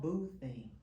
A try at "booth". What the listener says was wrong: She forgot the TH. I got that too. The boo thing.